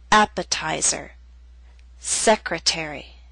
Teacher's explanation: Primary stress is at the beginning of these words, but the T still falls on a stressed syllable. It's secondary stress, a little weaker but still stressed. That's why it's still a true T.